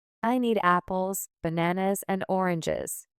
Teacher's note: Your voice rises on apples and bananas but falls on oranges to show the list is complete.